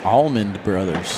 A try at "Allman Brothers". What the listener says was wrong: Almond. Not a D on the end.